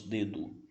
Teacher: A gente sempre esse O vira um U, nós brasileiros falamos dedo.